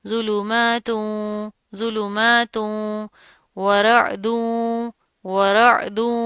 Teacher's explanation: اب یہاں پر کیا ہے، تا کے اوپر کیا ہے تو پیش آ رہی ہے، تنوین ہے، آگے حروف یرملون میں سے واو آ رہا ہے، تو یہاں پر ہم ادغام کریں گے